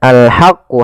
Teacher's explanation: ha kecil dibaca dengan ha, alirkan nafas